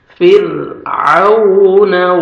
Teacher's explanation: پھر واو لین ہے، نرمی سے ادا کریں گے اور عین کو اپنے صحیح مخرج سے ادا کریں گے تاکہ